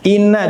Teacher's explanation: In langsung tertutup karena lewat hidung saja. Mulut tidak ada amal. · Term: nun tasydid